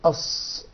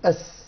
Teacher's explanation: أعطينا للصاد صفة التفخيم أو التغليظ، غلظنا الحرف، أما السين أعطيناها صفة الترقيق، رقيقة في نطقها.